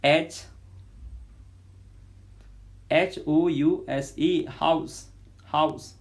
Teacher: glottal vocal cords are narrowed in the larynx